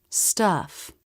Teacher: The tongue presses down just a bit in the back. In a stressed syllable, the vowel curves up, then down.